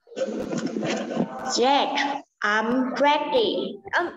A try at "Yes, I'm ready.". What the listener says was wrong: Yes của chị nó thành yet mất rồi. Nó lại tăng một cái nghĩa khác rồi. Yes.